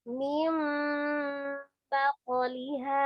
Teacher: nun sukun bertemu dengan ba iklam. Ada gunnahnya.